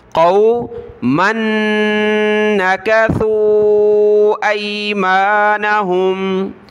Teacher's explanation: میم کو نون کے ساتھ ملائیں گے، ناک میں آواز پیدا کریں گے